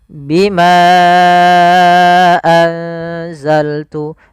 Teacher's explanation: Contoh di sini bima satu kata, anzal itu satu kata. Maka bimanya kita panjangkan sepanjang 4 harokat. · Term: mad jaiz munfasil